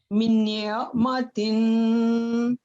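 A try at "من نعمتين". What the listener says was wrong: یہاں آپ نے جی یہاں غنہ بھی کرنا ہے نا، یہاں من نعمتین. یہ سارے ادغام المتماثلین کی مثالیں ہیں.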